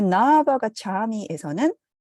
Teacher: 나 부정을 의미하는 나와 아바가 차미의 아가 만나서 동종 모음의 장음화가 일어났습니다